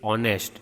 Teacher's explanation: because the H, alphabet H is silent over here